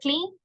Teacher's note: la N sí es voiced, sí me produce vibration